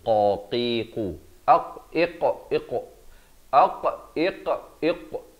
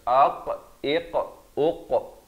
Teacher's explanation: qaf berat makhrajnya di pangkal lidah